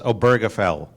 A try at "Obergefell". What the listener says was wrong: Well, not really. Obergefell. The stress is on the O. Obergefell.